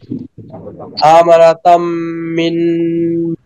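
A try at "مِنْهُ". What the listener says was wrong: মিন, শেষে হা আসবে, হায়ের আওয়াজ আসবে, হা যখন জজম হবে তখন নুন ও জজম, হা ও জজম, তখন দুইটাই জজম অবস্থায় থাকবে, তখন হবে আমানাতাম মিন। মিন হাটা আওয়াজ আসবে, কিন্তু হু হা হি কিচ্ছু হবে না, কিন্তু হায়ের শব্দটা আসবে। আমানাতাম মিন।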